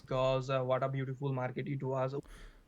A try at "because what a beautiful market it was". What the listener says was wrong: again it sounds a bit pre-rehearsed what a beautiful Market it was and we don't get the intonation